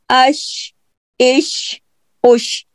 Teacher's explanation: और तालू जो है वो एक दूसरे के बहुत करीब जाएंगे, जुबान बहुत करीब जाएगी तालू के लेकिन चिपकेगी नहीं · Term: शीन